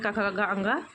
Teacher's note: क वर्ग का उच्चारण स्थान कंठ है।